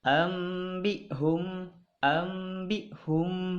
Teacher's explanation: Maka pembacaannya seolah-olah di depan huruf nun mati ini terdapat mim. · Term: iklab